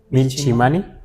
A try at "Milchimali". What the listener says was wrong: Milchimali. Aquí lo pone con doble L. Milchimali. Termina en LI. Milchimali.